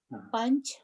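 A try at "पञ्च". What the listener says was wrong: Pancha, pancha. There is no halanta here. There is no halanta here. So in Sanskritam, unless there is a halanta marker, you have to say the full matra. You have to say the whole word, full sound.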